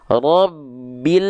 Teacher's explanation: Banyak orang melafalkan lam sukun masih dengan memantul.